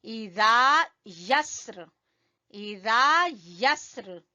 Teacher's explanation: زال زبان کی نوک اور اوپر کے سامنے والے دو دانتوں سے ادا ہوگا